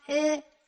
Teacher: Japanese uh is an endo labial sound that means that the lips are pulled together to compress the sound